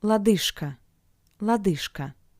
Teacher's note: in front of the voiceless consonant k sounds like its paired consonant sh